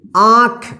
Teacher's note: चंद्रबिंदु का मुंह और नाक की मदद से और इसके उच्चारण में लघुता होती है यानी इसका उच्चारण जल्दी हो जाएगा [संगीत] [संगीत] इसको पढ़ेंगे सॉन्ग